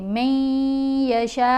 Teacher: میم کو یا سے ملائیں گے، نون سائلنٹ ہے، میم کو یا سے ملاتے ہوئے غنہ کریں گے، من یشاء، شین کو 5 الف کی مقدار جتنا لمبا پڑھیں گے، بغیر حساب۔